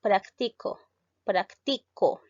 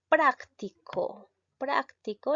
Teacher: En cambio, la otra dice práctico. Práctico, la sílaba tónica lleva en prac y esto llega a ser el adjetivo. · La mayor fuerza de voz lleva en la sílaba ti y llega a ser un verbo.